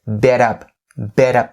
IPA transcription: bɪ-tʌp